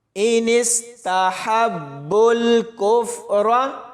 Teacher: آگے با کو سیدھا لام کے ساتھ ملائیں گے، اس خالی واو کو ان دونوں خالی الف کو نہیں پڑھا جائے گا۔ ہا کی آواز حلق سے نکلے گی اور با کے ساتھ ملاتے ہوئے سختی سے پڑھا جائے گا۔ اور آخر میں اس را کو موٹا پڑھیں گے۔